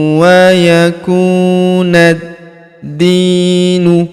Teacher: Huruf di kita panjangkan dua harakat karena terdapat ya sukun di depannya.